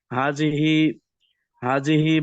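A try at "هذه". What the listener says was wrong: হাজিহি না, হাদিহি দাল, হাদিহি।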